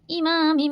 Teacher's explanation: میم الف زبر ما کو ایک الف کے برابر کھینچیں گے، اور تنوین اور نون ساکن کے بعد میم ہے، ادغام بالغنہ کا قاعدہ ہے، امام مبین۔